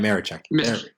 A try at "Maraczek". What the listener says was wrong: Pro tip, you don't pronounce the Z. You said you had a little bit of the Z in there.